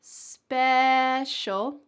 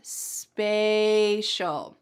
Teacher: at the beginning of the first word, special, we have a short E, special. And at the beginning of the second word, we have an A sound, spatial.